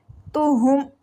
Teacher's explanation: ہاں ہلکی لیٹر ہے، گلے کے آخری حصے سینے والی سائڈ سے یہ ریڈ ہوگا